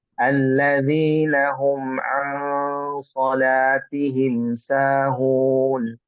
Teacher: Nun mati bertemu dengan huruf shad tadi sudah bagus ya diikhfakan. Cuman saja panjangnya mungkin agak panjang sedikit ya. Dua harokat ya. Alladzina hum nah, ada agak ditahan ya sampai dua harokat ya.